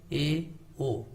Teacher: अर्ध समृद्ध का मतलब कि जिनमें मुंह थोड़ा सा कम खुलता है